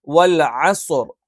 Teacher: ഞാൻ കുറച്ചുകൂടി ഡീറ്റെയിൽ ആയിട്ട് അക്ഷരങ്ങൾ പറയുയാണ് വ ചുണ്ട് വൃത്താകൃതിയിൽ വെക്കണം വഅസർ ഐൻ തൊണ്ടയുടെ മധ്യഭാഗത്തുനിന്ന് വരണം